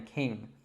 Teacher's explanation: this is actually a nasal sound that we make in our nose so you should feel kind of like a vibration there